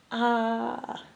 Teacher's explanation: That sound is produced in the throat where the tongue is rooted.